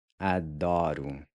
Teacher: Then finally, the O is going to sound like a U.